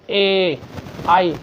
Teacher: इनका उच्चारण आपका कंठ से भी और तालु से भी हो रहा है